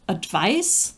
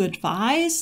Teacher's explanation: voiced s and that gives us in english the distinction between advice the noun and to advise the verb with the voiced s